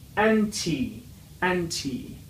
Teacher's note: Anti. Also, the last letter sounds like a long vowel E